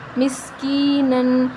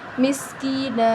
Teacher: وقف کی صورت میں مسکینہ. نون کے اوپر جو دو زبر ہیں وہ وقف کی صورت میں ایک زبر ختم ہو جائے گا اور ایک زبر الف کے ساتھ مل کر پڑھا جائے گا